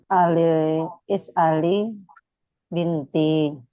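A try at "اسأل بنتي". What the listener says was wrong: Disukun dulu ya normalnya. Is'al binti.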